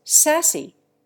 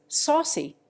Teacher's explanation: there is the substitution of the flat a for the broad a in sauce. England has gone back to the broad a, but in America the flat a persists, and many Americans who use sassy every day would scarcely recognize saucy if they heard it.